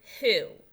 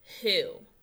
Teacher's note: instead of making the W sound, it makes the H sound. So really, we don't hear this W, okay?